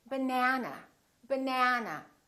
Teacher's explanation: this second syllable is stressed that means this vowel is going to be much longer